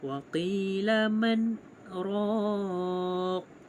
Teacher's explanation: Cara bacaannya saktah pada kalimah man dengan bacaan izhar.